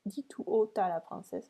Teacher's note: Here you can notice that I don't do la liaison